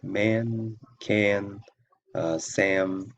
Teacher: the short a sound is raised before nasal consonants